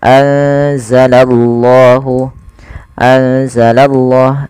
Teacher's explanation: ya anza langsung kepada makhj daripada huruf z anza anzalallahu anzalallah dan kita menebalkan pada lafal Allahnya